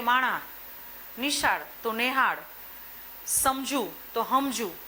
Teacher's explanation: સનો અઘોષ હ થાય તો કાઠિયાવાડમાં આની લાક્ષણિકતા છે